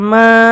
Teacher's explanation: মিম খারা জবর মা এখানে এক আলিফ টান হবে